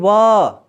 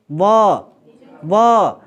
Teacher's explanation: निचला दांत ऊपरी होठ को स्पर्श करता है, या फिर निचला होठ ऊपरी दांत को स्पर्श करता है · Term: दंत्योष्ठ